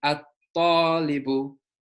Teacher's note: with our sun letters, we skip the lam and we double the first letter of the words